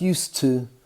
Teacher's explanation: used to becomes used to and it eliminates the d